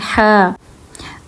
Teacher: ह को बिल्कुल हलक से निकालना है आपने